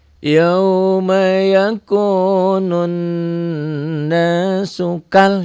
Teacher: Tapi kenapa itu warna kuning? Karena ini mantobi'inya berubah fungsi, berubah hukum menjadi qasar, menjadi bacaan pendek